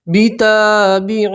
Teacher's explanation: الف مدہ اس لیے ایک الف کے برابر کھینچ کر پڑھیں گے